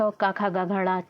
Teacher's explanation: कंठ यानी कि गले से बोला जाता है